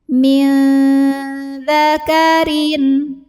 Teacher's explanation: nun sukun ini dibunyikan samar-samar, siap-siap ke dzal, disertai dengungan. Nah, samar dengungnya sama ya, karena dzal ini makhrajnya pertengahan, jadi tidak terlalu dekat, juga tidak terlalu jauh dari nun. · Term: ikhfa awsat